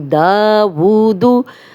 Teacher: दा खड़ा ज़बर, इस पे उल्टा पेश, दोनों 2-2 हरकत लंबे होंगे, लेकिन पेश जो है वो बिल्कुल भी लंबी नहीं होगी। दावूदु।